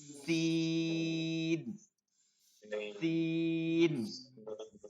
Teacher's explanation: সিন হচ্ছে নিচের দাঁতের আগার সঙ্গে লাগায় শব্দ আসবে